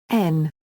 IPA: n